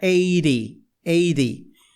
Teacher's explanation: o T fica com som de R. Por que o T ficou com som de R? Porque está cercado por palavras que têm som de vogais